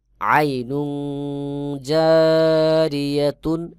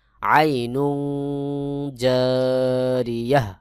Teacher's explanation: শুধুমাত্র যদি গোলতা থাকে তাহলে সাকিন হয়ে যাবে এবং এই গোলতা হা উচ্চারণ হবে। সহি উচ্চারণ হলো আইনুন জারিয়াহ, এই গোলটাকে হা সাকিন বানাই দিতে হবে।